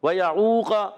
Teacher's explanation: عین حلق کے درمیان والے حصے سے ادا ہوگا، قاف حرف مصالیہ میں سے ہے اور موٹا ادا کریں گے، ہاں زبر والا بھی ہے، کھینچیں گے بھی نہیں، اور زبان کی جڑ اور تعلق کے نرم حصے سے قاف ادا ہوتا ہے۔